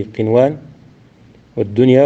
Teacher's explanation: النون تظهر عند الواو والياء في كلمتي قنوان والدنيا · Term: الإظهار